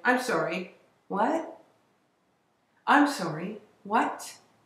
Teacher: we can show without any action anger or irritation by aspirating a final te